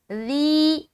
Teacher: بالکل نرمی کے ساتھ بغیر سیٹی کے ذال کو ادا کریں گے